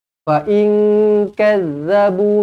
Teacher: nun kosong bertemu dengan kaf, ikhfa hakiki dengung dua harokat.